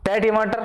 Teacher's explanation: टे है मूर्धन्य हो जाएगा। अल्पप्राण भी है और अघोष भी है